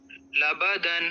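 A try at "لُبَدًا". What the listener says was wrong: لام پہ پیش ہے.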